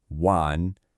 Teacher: It's that dipping rising third tone again